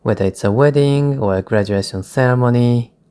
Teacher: I use the rising intonation for each item.